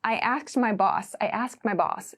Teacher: So it's like the D sound gets very very very small.